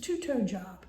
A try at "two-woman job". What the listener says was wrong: You have to enunciate the toad because it sounds like a two-toe.